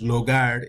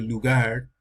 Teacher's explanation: a veces la O por la U, entonces logar en vez de lugar